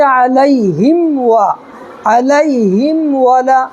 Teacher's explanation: تو یہاں دیکھیے میم ساکن ہے، میم ساکن کے بعد یہ نہ میم ہے نہ با ہے کیا، واو ہے، تو اس کو اظہار کر کے پڑھیں گے، اس کو اظہار شفوی کہتے ہیں۔